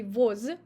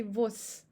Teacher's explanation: Here we have devocalization of z in the end of the word.